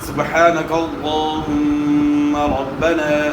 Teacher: سبحانک اللہم ربنا، یہاں جو ہے ہا کی آواز کے درمیان سے ہے، الف مدہ ہے اور بعد میں قلقلہ ہوگا، اور لفظ اللہم کے لام سے پہلے زبر ہے تو لفظ اللہم کا لام موٹا ادا ہوگا، پورا ادا ہوگا، اور میم مشدد میں جو ہے نا غنہ ہوگا.